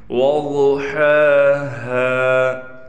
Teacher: ایک ہا حلق والا ہا ہے جو صاف طور پر ادا ہوتا ہے، یعنی بڑا ہا جسے ہم کہتے ہیں، اور ایک چھوٹا ہا ہے، ان دونوں میں بھی ہم نے فرق کرنا ہے۔